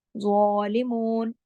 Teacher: ज़ा को मोटा पढ़ना है और एक अलिफ के बराबर खींचकर, क्योंकि उसके ऊपर खड़ी ज़बर है।